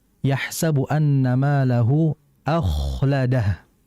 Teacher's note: kha ini kan dia itu hurufnya hamas, ada udara yang keluar. Ada udara. Kalau pemirsa bisa buktikan dengan tangan ditaruh depan mulut ya.